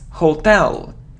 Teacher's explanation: So the stress is on the second syllable, hotel.